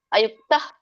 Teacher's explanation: ವಿಸರ್ಗ ಕೂಡಿದೆ ಸೋ ಹಾಗಾಗಿ ಹ ಪೂರ್ಣ ಹೇಳಂಗಿಲ್ಲ